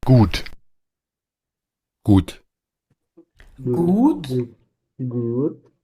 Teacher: cuando se usa de forma coloquial como una interjección, se puede cambiar el sonido por una u corta.